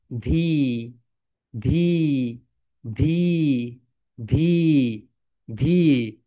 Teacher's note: উপরের দাঁত নিচের ঠোঁটের সঙ্গে হালকা টাচ করবে।